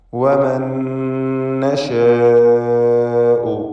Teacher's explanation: നശാ എന്നതിലെ ദീർഘം മദ് മുത്തസിൽ വാജിബ് എന്നതാണ്. നിർബന്ധമായും അലിഫിനെ 4 or 5 ഹറക്കത്തിൻ്റെ അളവിൽ ദീർഘിപ്പിക്കണം. അലിഫും ശേഷം ഹംസയും ഒറ്റ പദത്തിൽ വന്നതാണ് ഇതിനുള്ള കാരണം.